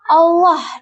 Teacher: Huruf ha makhrajnya itu ditenggorokan tengah dengan sedikit getaran